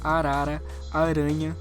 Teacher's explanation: o primeiro R é o r minúsculo ele tem o som trilhado